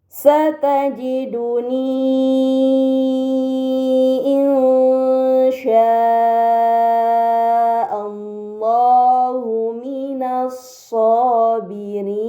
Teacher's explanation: Kemudian pada kata insya'a, ini dinamakan mad muttasil karena mad bertemu dengan huruf hamzah dalam satu kata, maka harus dibaca panjang selama 4 atau 5 harokat